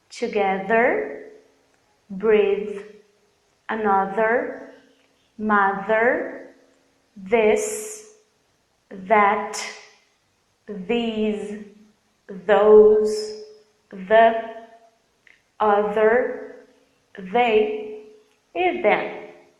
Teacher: o voiced TH, que é aquele que a gente reproduz usando as nossas cordas vocais